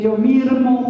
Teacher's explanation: la conversión de S en R en el contexto con consonante sonora